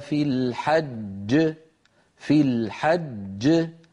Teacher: الذي تقلقل هو الجيم الثانية، أما الأولى فبقيت على حالها، خرجت بالتصادم بين طرفي عضوي النطق ولا تأثير لذلك على القلقلة أبدا.